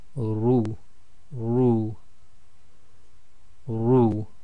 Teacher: the ra can sometimes be tarqiq and sometimes be tafkhim, i.e. sometimes light and sometimes heavy. With the dhamma, it's generally heavy.